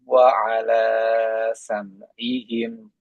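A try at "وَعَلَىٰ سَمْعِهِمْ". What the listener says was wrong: Nah, wa ala dua harokatnya di sini tadi kelebihan.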